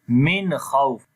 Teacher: After the noon sakin, if the next letter is throttle letter, which is kha, so we make there izhar halaqi, so we make the clear sound of noon here